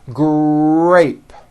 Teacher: the R sound is stronger and you even hear it more than the G sound. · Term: R blends